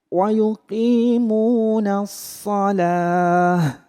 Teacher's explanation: Kemudian wa yuqimuna sholata ya ketika kita mau berhenti di sholata maka ta marbutohnya atau ta yang bunder itu berubah menjadi ha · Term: tak marbutahnya